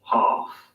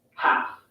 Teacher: Ah in UK English normally becomes an A sound in American English.